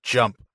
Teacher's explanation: So when you make those sounds, your tongue is bunched up in your mouth by the palate behind the alveolar ridge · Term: J sound